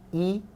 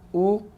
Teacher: 입술이 평평하고 동그란 거, 평평한 거, 동그란 거. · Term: 평순하고 원순